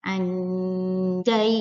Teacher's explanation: Nun sukun bertemu jim, anjainakum. Nah, cara bacanya jadi disamarkan nunnya, tapi mulut kita berbentuk huruf setelah nun atau tanwin. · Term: ikhfa hakiki